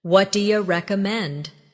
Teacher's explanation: Notice how do you becomes dia in casual conversation.